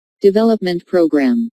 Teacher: since these two words make a compound noun the main stress falls on development